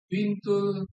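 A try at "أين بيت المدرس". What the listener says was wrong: Baitul. Baitul. Baitul. Titiknya di bawah. Baitul.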